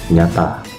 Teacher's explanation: bagian tengah guda dinaikkan ke langit-langit keras tapi udaranya diarahkan keluar melalui hidung.